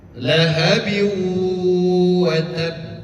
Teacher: kalau ada tasdid dan pengin berhenti di huruf qalqalah tersebut harus ditahan satu de satu detik.